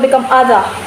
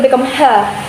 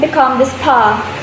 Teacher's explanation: the Aussie accent, they will get rid of letter R. So in the word other, it will become other.